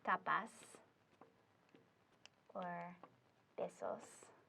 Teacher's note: you are still going to be emphasizing the next to last syllable